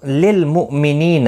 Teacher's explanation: حمزہ ساکن کو جھٹکے کے ساتھ پڑھیں گے. نی یا مدہ ہے، ایک الف کی مقدار کے برابر کھینچ کر پڑھیں گے.